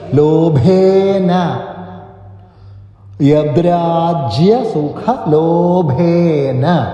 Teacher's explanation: സുഖ സുഖ അഖ അല്പം ശക്തി കൊടുക്കുക അതിഖരമാണ് മഹാപ്രാണാക്ഷരം കൂടിയാണ് സുഖ ലോഭേന ലോ എന്ന് ദീർഘമായിട്ട് അതുപോലെ ഭേ അത് മഹാപ്രാണാക്ഷരമാണ് ദീർഘമായിട്ടും ബലം കൊടുത്തു